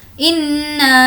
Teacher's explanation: नून पर तशदीद है, गुन्ना करेंगे।